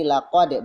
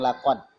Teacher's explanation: kalau dal mati, maka dia harus dipantulkan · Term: qol-qolah